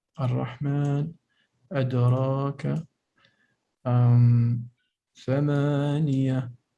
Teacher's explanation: Mad harakatan, that's the natural mad. Only 2 harakat.